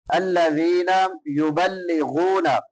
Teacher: الذین یبلغون، یبلغون غین ہے حروف حلقی میں سے، ادنا حلق سے ادا ہوگی، حلق کے شروع والے حصے سے. غین کے بعد واو مدہ ہے، ایک الف کے برابر لمبا کریں گے